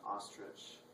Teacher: The short vowel sound that O can have is ah, as in ostrich